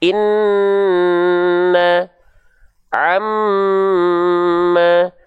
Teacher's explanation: kalau nun dan mim ketika dia bertasydid, kita sepakat. Dia dibaca ditahan 2 harokat.